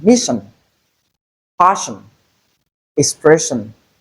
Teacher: So in place of tion, ssi, likely to have the sh sound. That's the voiceless palato-alveolar fricative sound. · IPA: /ʃ/